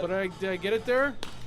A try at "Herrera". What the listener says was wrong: You don't pronounce the H. It's just Herrera.